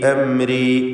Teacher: സാക്കിനത മീം ഇൽഹാർ ഷഫവി. അംരി വെളിവാക്കുക.